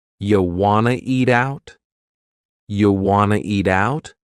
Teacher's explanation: we have reduced want to become wanna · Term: reduction